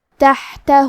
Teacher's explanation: کلمت تحتہ میں ہا کی ادائیگی حلق کے درمیان والے حصے سے ہے کیونکہ یہاں ہا ساکن ہے تو ہمیں ہا کو ظاہر کرنا ہے.